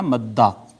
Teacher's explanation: حرف متحرک نہ ہونے کے باوجود اور اس کو ساکن ہونے کے باوجود بھی ہم نے پہلے حرف کا دوسرے حرف میں ادغام کر دیا، حالانکہ پہلا حرف ساکن تھا، ہم نے پہلے کا دوسرے میں ادغام کر دیا، تو یہ ہو گیا مدہ۔ دو دالیں تھیں، پہلی کو دوسری میں ضم کر دیا تو یہ مدہ ہو گیا